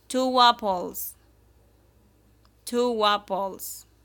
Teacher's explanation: We link the sound with W.